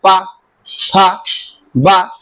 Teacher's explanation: प ब जब ओठ आपस में टच करते हैं तब वहां ओष्ठ वर्ग का होता है।